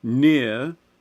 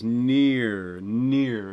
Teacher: the big thing that tends to happen with this one is the movement towards e that raising towards the fleece vowel